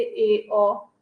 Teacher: जिन स्वरों के उच्चारण में मुख द्वार आधा बंद रता है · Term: अर्ध समृत